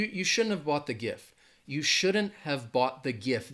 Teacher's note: that have almost sounds like it gets reduced to like an of like a and you could think of it like an of' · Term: reductions